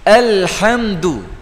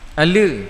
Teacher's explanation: Bila kita masuk ala, yang sepatutnya disebut al, seolah-olah kita telah qalqalahkan huruf lam